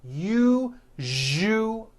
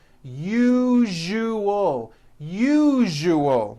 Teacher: That second syllable, ju, the one with the underline, needs to be voiced. Put your hand on your throat and feel for the vibration in the second syllable. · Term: voiced zh sound